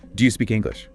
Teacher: Say this with a clear rising tone at the end asking for a yes no answer.